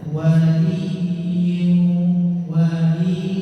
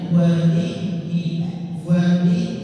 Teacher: Jangan dibaca wali wali linya enggak panjang ya langsung ditekan masuk ke taswidnya